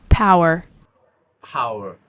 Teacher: সাউন্ডটা যেটা শুনলেন সেটা আমেরিকান সাউন্ড এসেছে, যেহেতু আর উচ্চারণ হয়েছে। · এটা ঠোঁট থেকে ঠোঁটে বাতাসটাকে আপনার এক্সপ্লোশনের মতো বের হয়, এর গলা থেকে উচ্চারণ হয় না, এটা এই জায়গাটা, এই জন্য এটা ভয়েসলেস।